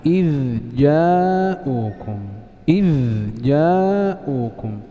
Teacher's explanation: النوع الثالث من أنواع التقارب تقارب في الصفات دون المخرج، تقارب في الصفات دون المخرج كالذال والجيم